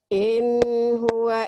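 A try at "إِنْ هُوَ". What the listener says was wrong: Idhar. In huwa. Idhar. Dilepas. Jangan ditahan. In huwa.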